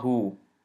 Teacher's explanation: Ha dhamma waw saghira. So this ha dhamma or ha madmuma has to be extended to two movements because of this waw saghira. So this is hu. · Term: mad tabai